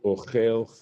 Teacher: the accent falls on the ultimate syllable, and in this case, this ultimate syllable is ochel, venakud kamatz katan.